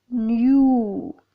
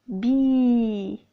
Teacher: the lips are rounded in the word new but spread in be when pronouncing b you feel like you are smiling this is